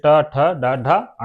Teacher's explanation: हमारा छत जीभ के ऊपर मान लोय जैसे छत हो गई छत पर जहां से दांत निकलते हैं उसके जस्ट पीछे जब जीभ का स्पर्श होता है तब ये ट ठ ड ढ अण निकलते हैं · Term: मूर्धन्य व्यंजन